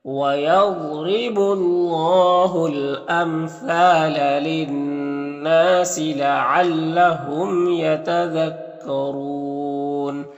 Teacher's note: وقف کی صورت میں مد عارض وقفی ہوگا